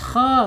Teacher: kha tebal ya, karena ada makhrajnya ada di tenggorokan atas ya